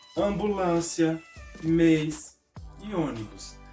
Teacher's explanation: o acento circunflexo vai deixar as letras A, E e O com um som fechado